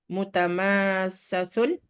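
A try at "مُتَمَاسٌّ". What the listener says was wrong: Tidak dipecah. Tidak dipecah.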